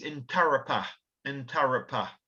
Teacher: in aboriginal pronunciation there's no emphasis on any one syllable so it's in tara we tend to emphasize the second syllable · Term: equal emphasis